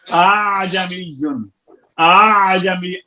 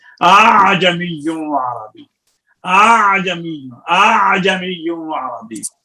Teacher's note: अलिफ मद्दा और हमजा के दरमियान पढ़ना, ना उसको खालिस अलिफ मद्दा पढ़ना है, ना खालिस उसको हमजा पढ़ना है